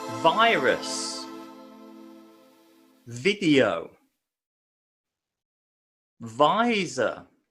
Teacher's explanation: the V sound we need to use our vocal cords it's what we call a voiced consonant